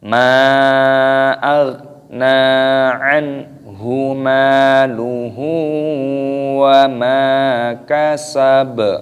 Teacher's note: ketika tanda waqaf berhenti maka dimatikan dan diqalqalah, dipantulkan suaranya.